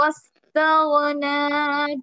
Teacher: वाव को direct सीन से मिलाना है, अलीफ नहीं पढ़ा जाएगा।